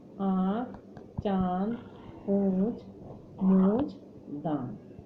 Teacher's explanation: जिस वर्ण का उच्चारण करते समय हवा मुंह और नासिका से निकलती है, मुंह और नासिका, उस वर्ण के ऊपर चंद्र बिंदु लगा दिया जाता है और इसे हम कहते हैं अनुनासिक।